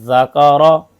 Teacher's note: number छह जाल जा द में फर्क जाल की आवाज बारीक और नरम होती है · ذال کی آواز باریک اور نرم ہوتی ہے